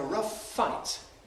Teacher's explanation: this is where one word ends with a fricative and the next word begins with the same fricative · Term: homorganic fricatives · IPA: [ˈrʌf ˈfaɪt]